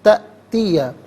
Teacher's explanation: تأتیہ میں حمزہ ساکن ہے، اسے جھٹکے کے ساتھ پڑھا جائے گا